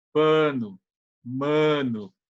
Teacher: o a do paulista que é o nasalizado